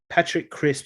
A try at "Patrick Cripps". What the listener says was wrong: Cripps? It sounded like you said crispy again.